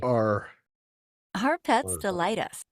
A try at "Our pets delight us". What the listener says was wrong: Yeah, watch out for the H there. That's not necessary, right? Like, the first word, they're not even hearing themselves, right? That first letter is wrong.